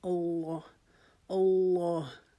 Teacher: اور اس کی کھڑے زبر کی وجہ سے ہم اس کو ایک الف کے جتنا لمبا کریں گے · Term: کھڑا زبر